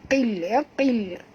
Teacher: Faw, muncungkan mulut perempuan. Qil, huruf qaf tebal, jangan baca kil tapi baca qil